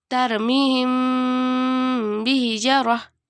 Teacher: apabila huruf mim bertemu dengan huruf ba maka dibaca dengung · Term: Ikhfa Syafawi